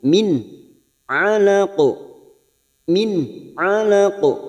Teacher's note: maka dibaca jelas tanpa mendengung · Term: Idhar halq